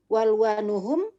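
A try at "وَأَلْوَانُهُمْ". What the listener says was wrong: Aywa, bukan walwanuhum tapi wa alwanuhum. Ya, jadi itu bukan alif lam ya, tapi alifnya di situ benar-benar hamzah. Hamzahnya ada kepala hamzahnya. Jadi itu bukan alif lam.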